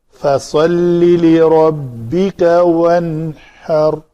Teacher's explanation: ونہر نہیں ہوگا، نون کو کلکلا نہیں کرنا، ساکن ہے تو اس کے نون کے مخرج کو پکڑ کر رکھیں گے اور آگے ہا کو ادا کریں گے